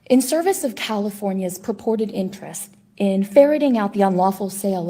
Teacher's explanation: she's not whispering she's just very breathy